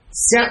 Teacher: ఇవి తాళవ్యములని పిలువబడతాయి, తాలువుతో పలుకుతాం గనక.